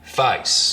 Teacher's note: the diphthong in face starts real low, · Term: face lowering